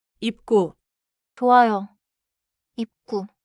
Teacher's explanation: 입구 is short. Close your lips at the end of 입, then move into 구.